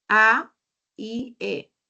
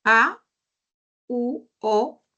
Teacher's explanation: cuando se pronuncia la I y la E, avanza un poquito la lengua, avanza un poquito más. Pero cuando pronunciamos la U y la O, retrocede un poquito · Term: vocal anterior